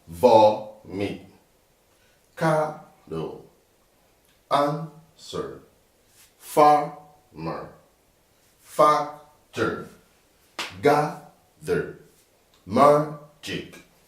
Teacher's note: So all these you stress on the first syllable. Vo, that's where the stress is.